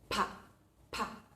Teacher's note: Pa es un sonido bilabial, es decir, se produce en la apertura de los labios, ¿sí? Nosotros retenemos el aire con fuerza y luego, cuando abrimos los labios, sale bruscamente.